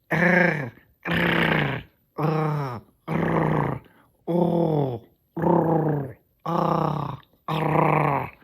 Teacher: we can pronounce the uvular trill at the same time as vowels, thus giving them the effect of being trilled